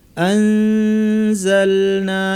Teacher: নুন সাকিন বা তানবিনের পর এগুলো আসলে ইখফা করতে হয়, অর্থাৎ পরের অক্ষর কি আছে দেখব, জায়ের মাখরাজ জিব্বা নিয়ে যাব, অর্থাৎ নিচের পাটির দাঁতের গোড়ায় আমরা জিব্বা নিয়ে নাক থেকে গুন্না করব, আনজালনা এভাবে পড়ব।